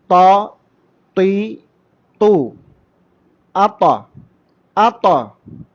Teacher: നാവിൻ്റെ അറ്റത്തിൻ്റെ തലയും മേലെ മുൻപല്ലുകളുടെ മുരടും ചേർത്തുകൊണ്ടാണ് പറയേണ്ടത്.